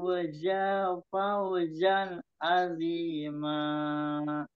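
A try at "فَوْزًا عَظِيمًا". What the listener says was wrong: Yang di za yang pertama itu nggak panjang ya. Fa'afu za fauzan azima. Nah, yang pertama itu. Fa'afu za fauzan. Fu-nya panjang. Cuman za-nya yang enggak.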